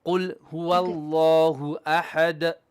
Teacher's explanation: The first ha is bottom third ha, not ha, middle throat.